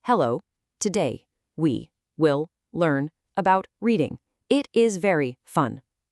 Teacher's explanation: It's monotone, it's dull, and it is incredibly hard for your brain to follow.